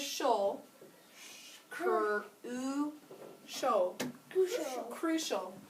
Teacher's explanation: We just said that C-I can make the sh sound, and this vowel is going to make a schwa sound. So this last part says shol.